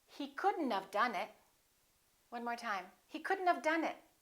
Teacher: don't pronounce the O don't pronounce the T